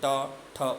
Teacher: अब ट वर्ग में देखिए, मूर्धा का जिह्वा के अग्र सिरे से ट, ठ ऊपर टच हो रहा है ना